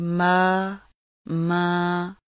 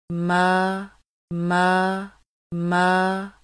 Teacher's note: मीम खड़ी ज़बर मा की आवाज़ को नाक में ले जाकर पढ़ने से बचाना